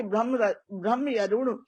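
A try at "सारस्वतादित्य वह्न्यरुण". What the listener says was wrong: हाँ, सारस्वत आदित्य वन्य अरुण, ब्रह्म नहीं है, वन्य वन्य अरुण।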